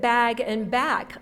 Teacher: final voiced sound um for bag and an unvoiced for back